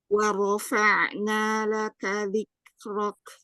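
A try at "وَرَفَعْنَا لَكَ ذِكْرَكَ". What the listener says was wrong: Iya, ahsan gitu ya. Ainnya sudah mengalir.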